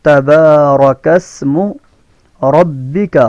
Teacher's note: रा के ऊपर ज़बर है, रा को मोटा पढ़ेंगे